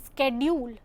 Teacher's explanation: American English pronounces the sound sk at the beginning of the word schedule